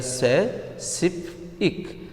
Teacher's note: Here, sip is the second to the last syllable. So, the stress will fall on sip.